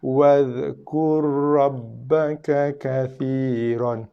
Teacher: Ni dipanggil bacaan idgham lah. Ra yang pertama ni diidghamkan, dimasukkan ke dalam bacaan ra yang kedua.